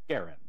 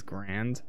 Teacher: an initial G hard, as in go, first A short, as in Harry, second A somewhat more obscure, as in errand, accent on the first syllable